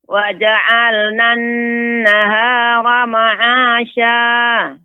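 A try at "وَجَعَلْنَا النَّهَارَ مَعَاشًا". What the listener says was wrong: Nah, untuk nun yang bertasydid agak diperlama Ibu. Ya, gunnahnya. Wa ja'alna an-nahara ma'asya. Ada sedikit tadi yang harus diperhatikan, termasuk nun yang bertasydid dan mim bertasydid ini harus lebih diperlama ya, gunnahnya.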